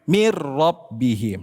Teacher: Nun sukun ketemu ro cukup dileburkan. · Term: idgham bila ghunah